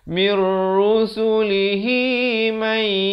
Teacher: Di sini idgham bila ghunnah. Nun mati bertemu ra. Asalnya min, tapi di sini kena baca mir.